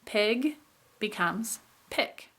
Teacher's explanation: a voiced sound after a vowel becomes devoiced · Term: post-vocalic devoicing